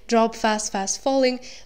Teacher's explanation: And in the last line, drop fast, fast falling, the words are consecutively stressed, showing how the speaker is almost like pulled into the water.